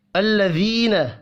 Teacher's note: الذین، یا مدہ ہے، 1 الف کے برابر کھینچ کر پڑھیں گے